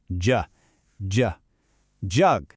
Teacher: It has that fun j sound. It kind of starts like a D sound, but it's much softer, right?